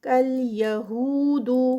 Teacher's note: یہو ہو پہ 2 کاؤنٹس، واو مدہ